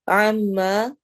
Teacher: عَمَّا میم غنہ ہو رہا ہے اور الف مدہ ہے